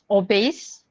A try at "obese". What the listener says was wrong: Ah, E sound should be highlighted. Obese. Obese.